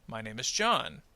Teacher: So notice that John receives more of that rising action and then falls at the end because it's the end of the sentence. Now name gets a little bit of a rise because name is also an important word. But John is clearly the focus of the sentence. · That's the idea of focus, is we're emphasizing the word John even more than the word name, and of course very much more than my and is